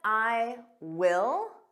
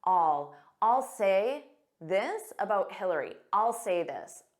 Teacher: Native speakers will commonly form a contraction and say all. Notice how unstressed that is.